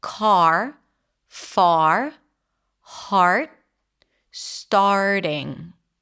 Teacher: That's basically the ahs in father. The tongue is down, the mouth is open, the lips are slightly rounded because it's an R vowel.